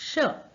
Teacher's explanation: श के उच्चारण में जीभ तालु को छूती है, यानी हमारे जो मुंह है उसके ऊपर की तरफ हमारी टंग जो है ऊपर छूती है जब हम श का उच्चारण करते हैं।